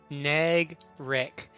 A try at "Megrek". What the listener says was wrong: With an M.